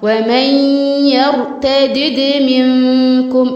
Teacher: الياء مرققة والراء مفخمة